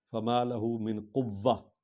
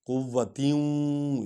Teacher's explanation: وا پر سٹریس آئے گا، زور آئے گا کیونکہ اس پر شد ہے، شد والا حرف 2 بار پڑھا جاتا ہے۔